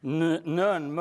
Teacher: So nuh and muh are quite similar in that you have a lowering of this soft palate. But in one case you superimpose this on a labial stoppage of flow.